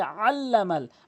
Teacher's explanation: বলতে হবে আল্লামাল আইন লাম জবর আল লাম জবর লা আল্লা আইনটি হলকের মাঝখান থেকে চাপ দিয়ে উচ্চারণ করবেন